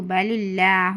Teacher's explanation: با زبر با، لام زیر لل، بل، لام کھڑا زبر لا، ہا پیش ہو، بل اللہ، اس میں موٹی آواز نہیں کرنا، اللہ کی لام کو باریک پڑھنا ہے، بل اللہ، اس طریقے سے۔